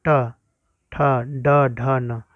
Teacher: तो नौ का उच्चारण स्थान होगा मूर्धा